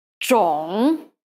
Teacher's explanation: it's a third tone word so to mimic this tone properly you can think of digging down like to plant a seed to the lowest part of your voice and then scooping back up to its more normal register